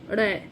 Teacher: उच्चारण करते समय जीभ जो है ना, पीछे से एकदम आगे की ओर गिरती है, ठीक है। ऊपर उठकर एकदम झटके से आगे की ओर गिरती है।